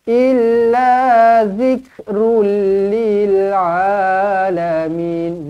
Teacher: Tanwin bertemu dengan lam sabdu. Jumpa dengan lam sabdu, tak payah dengung. Masuk sahaja. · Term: Idgham bila gunnah